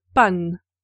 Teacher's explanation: La dentale T en position finale ne s'est pas maintenue de sorte qu'il nous reste panne de même qu'à l'accusatif.